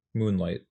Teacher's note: I think that's just stressed and then stressed again.